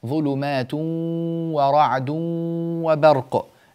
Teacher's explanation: الإدغام هنا إدغام بغنة، فلا بد من عمل الخيشوم في هذه الواو